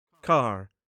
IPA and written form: kæɹ (car)